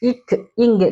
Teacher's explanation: நாவுடைய முதல் பகுதி வந்து அன்னத்தின் அடிப்பகுதியை தொடுவதால் பிறக்கின்றது. பொருந்துவதால் பிறக்கின்றது.